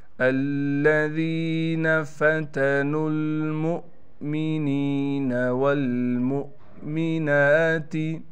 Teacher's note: नून पर कड़ा ज़बर होने की वजह से नून को एक अलिफ की मिक़दार खींचेंगे